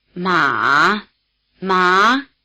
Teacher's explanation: the rising tail is a tailing off in effort if not in loudness in fact the rising tail is completely lost in certain circumstances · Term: low tone